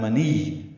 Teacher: منی میں میم کو نون سے نہیں ملانا، نون کو یا سے ملانا ہے